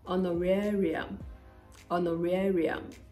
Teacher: the H is there but it is non-existent when you're pronouncing it · in honorarium the stress is on the third syllable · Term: The Silent Age